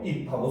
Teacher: 비읍하고 피읍은 둘 다 대표음이 비읍입니다. 그러니까 사람의 입을 나타내는 입도 입, 비읍으로 소리가 나고 나뭇잎 할 때 입도 역시 비읍으로 입하고 소리가 납니다.